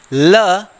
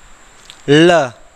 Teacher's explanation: ल का उच्चारण करके देख लीजिएगा, ल जैसे हाथी के सूंड होते हैं वैसे ही हवा जीभ के अगल बगल से निकल जाती है, इसीलिए इसे पार्श्विक वर्ण कहा जाता है। ल तो देखिएगा, जो हमारी जीभ होती है थोड़ी सी मुड़ती है और हवा जो होती है ऐसे जाती है, ऐसे, है ना, तो इसीलिए इसे पार्श्विक वर्ण कहा गया।